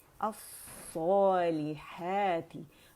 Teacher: सौद जो है मोटा है, और क्योंकि मद से खींचे तो इसकी मोटाई में मज़ीद इजाफा हो जाता है